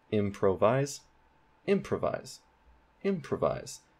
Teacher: the main stress is at the beginning of the word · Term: primary stress